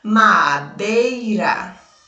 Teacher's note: Já na palavra madeira, o som do E foi maior do que o som do I, por isso ele recebe o nome de semivogal.